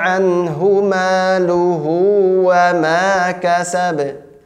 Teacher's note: ba-nya langsung dibaca pantulannya, jangan dianggap ada sukunnya lagi atau ada tasdidnya atau apa dan seterusnya, tidak, langsung dibaca pantulan.